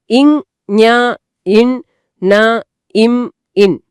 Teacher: மெல்லினம்ங்கறது மென்மையான நாசி ஒலிகள் nasal sounds அதனால இவை மூக்கை இடமாக கொண்டு பிறக்குது. மூக்கின் வழியா காத்து வெளியேறினால் தான் இந்த ஒலிகளே முழுமை அடையும்.